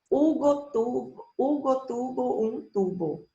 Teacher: As letras B e V representam o mesmo sonido. Os dois têm o mesmo sonido em espanhol, B.